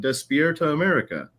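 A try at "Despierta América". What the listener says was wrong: But you gotta roll it. Despierta America.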